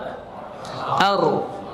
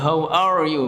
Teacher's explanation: takrir yaitu bergetarnya ujung lidah ketika mengucapkan huruf dengan getaran yang halus. Itu dimiliki oleh huruf ra saja.